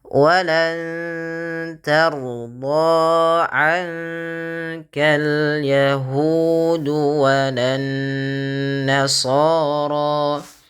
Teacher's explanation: Walanna tahan bunyi suara nunnya karena dia guna.